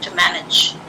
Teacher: When I speak fast, the two becomes t.